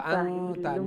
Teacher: নুন সাকিনের উপরে তা আইছে, ইখফা হইব।